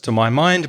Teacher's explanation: I'm stressing the my to my mind